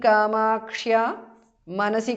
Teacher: Anuswara changes to ng there. Kamakshyāha, visarga is dropped because of sandhi.